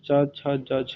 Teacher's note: चा वर्ग जो होता है चा, छा, जा, छा, ये तालव्य से उच्चारित होता है